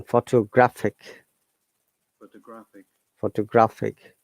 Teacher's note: Then photographic, 4 syllables, but stressing on third sound. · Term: word stress